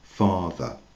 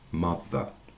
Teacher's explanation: on ne prononce pas du tout le ER. C'est un son A.